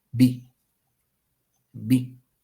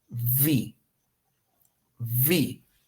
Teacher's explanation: La primera, B, se hace solamente abriendo los labios. Decimos B, B. Y listo. Solo abrimos los labios. B. La segunda, la segunda es, podemos decir como sexy, mordiéndose el labio inferior